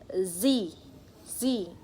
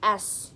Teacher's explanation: explain about the voice and voiceless sound z or s and for the s there is no vibration